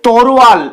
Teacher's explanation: ভুলভাবে উচ্চারিত হয়ে যখন তরোয়াল হচ্ছে তখন অন্তস্থ অ এবং র জায়গা পরিবর্তন করছে এবং সেগুলো আগে চলে আসছে এবং ল টা পরে চলে যাচ্ছে